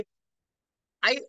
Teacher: ఏదైతో కంఠతాలు, ఏ ఐ అన్నవి కంఠము plus తాలువుల స్థానము అన్నాడు